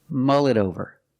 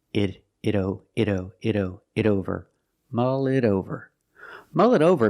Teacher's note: The T in it is pronounced as a fast D.